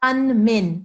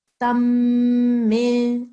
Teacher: instead the meme mushaddad sound will take over